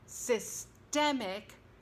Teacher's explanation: systemic, stress on the second syllable, as the adjective, as in systemic racism.